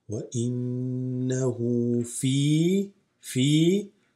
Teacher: وإنه noon shadda, always غنة